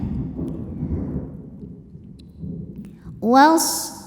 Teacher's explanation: Ini alifnya itu hamzah wasal ya, jadi kita lewat saja, tidak dibaca jika di tengah bacaan ya. Was, sodnya sofir ada desisan.